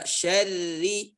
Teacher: ra di sini kasrah yang dibaca dengan tarqiq